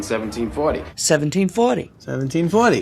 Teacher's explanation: so he's got that upward inflection